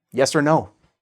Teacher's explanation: And finally, we have or, which is just pronounced instead of the or, the long sound, we reduce it to er.